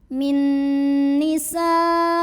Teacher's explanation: Hamzahnya yang i terdapat pada kata yang sama yaitu nisaikum. Maka sinnya dipanjangkan boleh 4 boleh 5 harokat. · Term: mad wajib muttasil